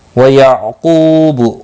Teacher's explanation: قاف مستعلیہ ہے، پر پڑھا جائے گا۔ قو واو مدہ ہے، ایک الف کے برابر کھینچ کر پڑھیں گے۔